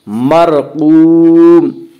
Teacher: اس کا قاعدہ ہے کہ را ساکن سے پہلے زبر اور پیش آئے تو را کو پر پڑھیں گے، یا را ساکن سے پہلے زیر آئے تو را ساکن کو باریک پڑھیں گے۔ یہاں را ساکن سے پہلے زبر ہے، اس سے را کو پر پڑھیں گے۔